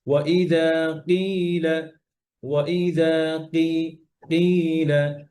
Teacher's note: কফের মাখরাজ থেকে হচ্ছে জিহ্বার একদম গোড়া উপরের নরম অংশ, ওখানে লাগবে এই ওয়াইদা কিলা, যেন ওয়াইদা কিলা উপরে শক্ত জায়গায় না লাগে।